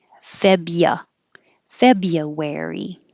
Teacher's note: forget about that r after the bee